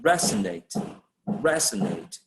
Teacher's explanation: primary stress will be placed on the first syllable in that particular word